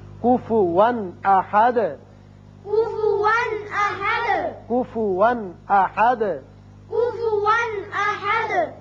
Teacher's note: یہاں کفوا 2 زبر تنوین ہے لیکن آگے حمزہ بشکل الف آ گیا جو کہ حروف حلقی میں سے ہے، لہذا یہاں اظہار حلقی ہوگا